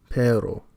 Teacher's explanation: Usually trills are produced with the tip of the tongue, as in Spanish perro, dog.